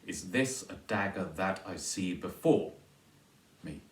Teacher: Me is unstressed. You can put that on the end. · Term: feminine ending